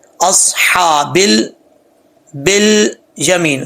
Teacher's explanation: لام ساکن ہے، لام کو پڑھتے وقت جو ہے آپ نے اس چیز کا خاص خیال رکھنا ہے کہ کہیں کلکلا نہ آئے، کلکلے سے بچنا ہے. اصحابل بل یمین، بل بل نہیں پڑھنا، بل یمین.